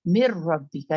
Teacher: مر ربی کا نون کمپلیٹلی گر رہا، را کی آواز نکل رہی ہے مر ربی کا. اور یہاں پر کیا ہو رہا ہے کہ جیسا یہاں پہ آپ اسٹریچنگ یعنی ادغام یا غنہ کر رہے ہیں، غنہ کے ساتھ ادغام ہو رہا ہے. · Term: ادغام تام